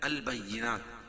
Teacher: البینات وقفہ کی صورت میں یہ تا کے اوپر جو پیش ہے اس کو جزمہ سے بدل دیں گے